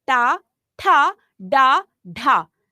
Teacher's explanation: जब हम बोलते हैं टा, तो हमारी जो जीभ है वो पीछे की तरफ मुड़ती है। टा मतलब हमारे तालु और कंठ के जो बीच का हिस्सा है वो कहलाता है मूर्धा। · जब हम इसका उच्चारण करेंगे तब हमारी ध्वनि मूर्धा से निकलती है, तो इसलिए वो मूर्धन्य व्यंजन कहलाते हैं।